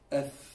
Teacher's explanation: the fa is the two upper teeth into the lower what? Lip. Okay? And you don't put too much pressure.